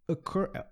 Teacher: E a pronúncia dessa palavra é occur, tá? O som da letra O ali, ele não é um som de O. Ele é um som é um som quase que some. Occur, ok? Você vê que é um som da sílaba fraca ali. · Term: schwa